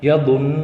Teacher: نون پر تشدید آ گیا تو یہاں پہ تھوڑی دیر ناک میں چھپا کر آواز کو پڑھیں گے، نون کو۔ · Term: غنہ